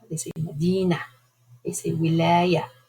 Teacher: You hear the ta. But many Arabs, when they speak in the dialects, they don't pronounce the ta marbuta.